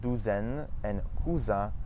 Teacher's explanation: The S in between two vowels, as well as the Z sound, make a Z.